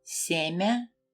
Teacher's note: you didn't hear a clear Y sound, right? It is because the letter Ya comes directly after a consonant.